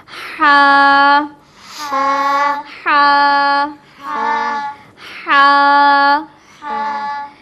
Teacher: हल्क के दरमियानी हिस्से से हा अदा होगा